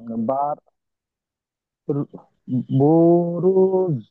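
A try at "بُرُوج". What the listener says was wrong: জি, বু টান হবে না, বুরুজ। বুরুজ।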